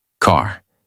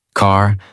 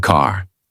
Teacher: It is not silent, it is not weak, it is fully pronounced. Your tongue moves slightly back, your mouth stays relaxed, and the sound comes from inside, not from the lips. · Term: American R sound